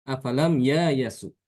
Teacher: Hamzahnya diganti dengan huruf alif. Dan ya-nya dibaca dengan fathah.